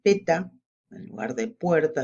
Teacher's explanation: se omite la coda y también el diptongo